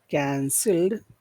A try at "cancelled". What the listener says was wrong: But it sounds like to me you're moving up and down when you say canceled. So Try to keep it low. Cancelled. You hear the difference?